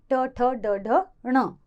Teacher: मूर्धा से बोले जाने के कारण मूर्धन्य कहलाते हैं वर्ण